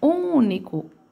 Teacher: Ele tem esse som de fechando o nariz, porque ele tá junto do N.